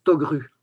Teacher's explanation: le K devant un R devient G, comme si c'était devant une voyelle